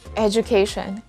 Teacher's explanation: That happens, there are a lot of words as well in English when instead of producing the letter D sound, we're producing the letter J sound, and this word is one of them.